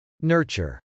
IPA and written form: nˈɝtʃɚ (nurture)